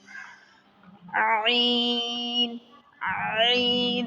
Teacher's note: درمیان والے حلق سے یہ نکلے گا عین